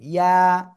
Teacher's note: জিহ্বার মধ্যখান, তারপর আবার উপরে তালুর সাথে লাগিয়ে সিম্পল উচ্চারণ করতে হবে, ইয়া। এক লিফ টেনে, ইয়া।